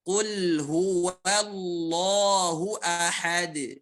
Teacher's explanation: Nah, wa-nya jangan sampai kita baca tebal. Wa-nya tipis ya.